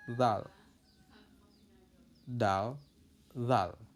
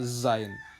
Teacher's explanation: Zal itu dia lebih tipis, sedangkan zain itu lebih tebal.